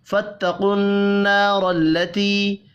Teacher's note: الف مدہ اور یا مدہ ایک ایک الف کے برابر کھینچ کر پڑھے جائیں گے